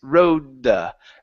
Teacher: that D, if you hear it, it's very, very quick and it's half of the D